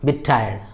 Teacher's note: when you have two T's, that is one at the end of the word and then another at the beginning of the word, so these two T's become one.